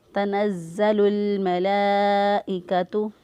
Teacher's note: زا جو ہے ایک تو اس کو سیٹی کی آواز جو ہے وہ نکالتے ہوئے، یا ہلکی سی چڑیا جیسی آواز نکالتے ہوئے، اور اس کے اوپر شد ہے مضبوطی اور قوت کے ساتھ اس کو ادا کرتے ہوئے ہم نے زا کو ادا کیا.